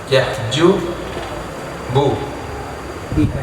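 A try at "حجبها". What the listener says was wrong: Hajbiha. Tidak pakai ya. Dan di sini pakai ya. Di situ pakai bah. Di hajbiha di sini.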